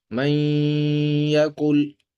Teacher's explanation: ہم غنہ کر رہے ہیں، یعنی آواز کو ناک میں ٹھہرا کے پڑھ رہے ہیں